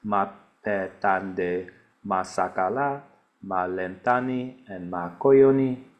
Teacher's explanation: And I'm exaggerating the pronunciations, but all of these show an all low pattern when they're in isolation. They all neutralize to the same.